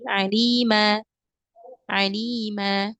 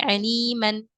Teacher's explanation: kemudian kita wakaf di sini maka bacanya menjadi ee apa namanya dibaca panjang dua harakat tanwinnya itu dihilangkan ya diganti dengan mad asli alima alima bukan lagi Aliman atau Alim enggak tapi dibacanya jadi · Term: Mad iwad